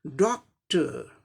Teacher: पहले सिलेबल को जोर से बोलना पड़ेगा, थोड़ा स्ट्रेस देकर डॉक्टर, और दूसरे सिलेबल को साधारण तरीका से बोलना है, डॉक्टर।